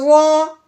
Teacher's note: زود کو موٹا بھی کرنا ہے اور اس کو نرمی کے ساتھ بھی پڑھنا ہے